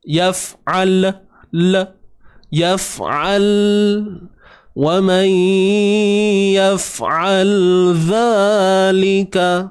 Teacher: Pegang makhraj lam betul-betul supaya tidak berlaku tawallud, iaitu memberanakkan bunyi lam tu.